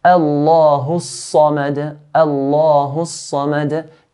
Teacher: Sad here is from the heavy letters. We pronounce sad in a heavy manner.